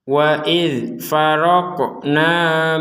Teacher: Di sini ada dzal seperti yang tadi di awal ini, tidak boleh kita pentalkan karena ini huruf dzal, bukan huruf yang dipentalkan atau dipantulkan